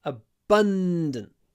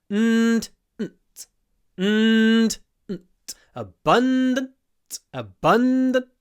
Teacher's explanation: a long n before a d. Abundant. But a very short n before a t.